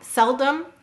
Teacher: cell is stressed dumb is unstressed